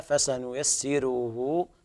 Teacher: انتبه إلى ترقيق الراء في قوله تعالى فسنيسره في الموضعين